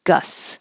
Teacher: Gusts, we don't have to say STS. We just skip the T,